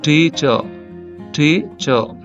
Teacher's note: టీచర్ లో టి అనేది stress అన్నమాట చ అన్స్ట్రెస్డ్